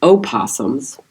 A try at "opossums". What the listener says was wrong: Yeah, but you don't say it like. The O silent.